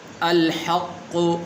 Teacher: ایک تو موٹا اپنے قاف پڑھنا ہے اور اس کے اوپر شد بھی موجود ہے، اور یہاں پر ہا ہے، ہا نہیں پڑھنی۔